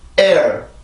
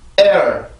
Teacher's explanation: 앞에서만 긴장을 하고 뒤에서는 소리를 풀어요. 즉 성대를 풀려준다라는 얘기인데 소리 흔적만 남겨주는 거죠. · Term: 이중모음 플러스 R